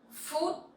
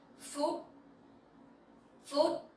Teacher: So PH sound you pronounce like F sound in English, and it sounds similar with food, right? But with dấu sắc you have to go up a little bit, and the tone has to be very strong.